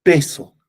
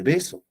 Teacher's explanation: Que la P es sorda y la B es sonora. Ese es el rasgo diferencial.